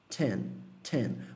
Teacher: Esse T é quase como se fosse um TS.